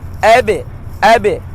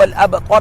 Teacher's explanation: با کو موٹا نہیں کرنا اور تا کو تو نہیں پڑھنا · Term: با لائٹ ہے